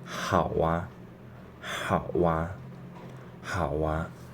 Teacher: Our lips are ended with u, ao, o. So when we want to pronounce after this, we will just naturally pronounce wa